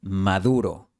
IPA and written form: ma'ðu.ɾo (Maduro)